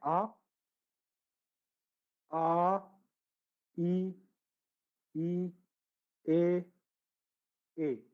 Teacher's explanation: अब अर्धव्रतमुखी में है आ, ई, ई, ए। इन्हें बोलोगे तो होठों का गोला नहीं बनेगा।